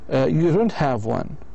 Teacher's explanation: a negative statement with intonation that goes up at the end